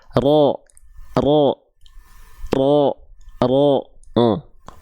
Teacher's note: huruf ro itu dilafalkan bukan dari ujungnya banget tapi dia dari dari bagian punggung lidah jadi kalau kita lihat begini dia enggak nempel begini tapi dia